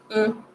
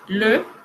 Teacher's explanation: Y la E, sonido cerrado, llevamos los labios más hacia adelante, con la boca un poco más cerrada, y pronunciamos E, como el le, que es el artículo definido, masculino singular.